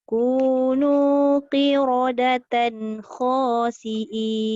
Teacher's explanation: Ra tebal, tan tu tak dengung.